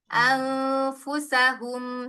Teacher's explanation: anfusahum satu harakat aja jangan dipanjangkan